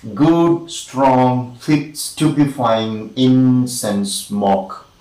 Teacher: successive syllables with approximately equal strong stress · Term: spondaic meter